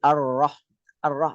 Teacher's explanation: ro juga jangan mencucu bukan arro tapi arah arah rnya biasa gini bibir nya itu enggak terpengaruh oleh tebal